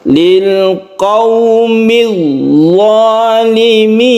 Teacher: Dha-nya tidak usah terlalu panjang, ini mad asli 1 alif saja. Zalimin ini boleh panjang sampai 3 alif untuk mad alid lisukun.